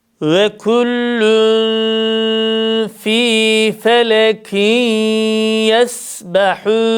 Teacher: Vev harfinde dudaklar yarım ötre şeklinde ileride. Küllü dudaklarımız ilerideyken ihfa yapıyoruz.